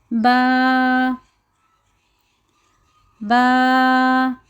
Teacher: جو ہمارے دونوں ہونٹوں کے اندر کا گیلا حصہ ہے، جب ہم اس کو ملاتے ہیں تو لفظ با با ادا ہوتا ہے